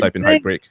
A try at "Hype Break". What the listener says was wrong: You say it so fast, it almost sounds like you're saying height. Hype Break.